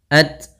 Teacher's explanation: sifat hamas yaitu mengalirnya nafas kita ketika melafalkan tak sukun